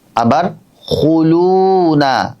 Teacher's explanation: হু যখন বলছি তখন কিন্তু আমার ঠোঁট গোল হচ্ছে